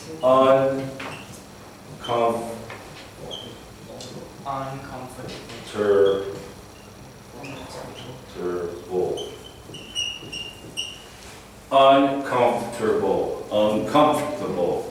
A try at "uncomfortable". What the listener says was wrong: C-O-M. You are like C-O-M, no N.